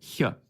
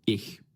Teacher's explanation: But this sound in certain environments could have had a more frontward, position fricative, like ch, as in German ich, right? That's a palatal fricative.